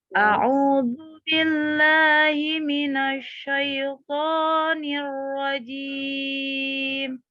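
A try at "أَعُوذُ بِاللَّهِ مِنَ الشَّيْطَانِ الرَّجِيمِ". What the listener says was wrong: Sama dengan pengucapan shinnya itu minasy ya, agak maju ya, bibir bawahnya itu ya, maka harus konsentrasi itu dengan bibir bawah, kompakan itu ya, otak sama bibir bawahnya harus ya. Kadang-kadang itu perintah bibirnya itu refleks aja maju ya, minasy ya, a'udzu billahi minasy syaitonir rajim.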